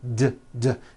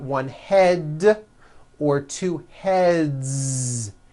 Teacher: Another word, head, ends with a voiced D